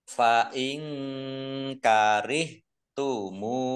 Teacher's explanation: Nun sukun bertemu dengan huruf kaf, bacaan ikhfa dibaca samar-samar